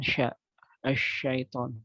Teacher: Adapun yang namanya tafasyi, hadirin rahimakumullah, dinamakan tafasyi adalah intishar, adalah menyebarnya hawa, hawa atau menyebarnya udara ke dalam rongga mulut ketika pengucapannya, ketika pengucapan huruf sya